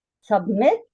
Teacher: The last syllable is stressed. It is pronounced more loudly and clearly and longer. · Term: stressed syllable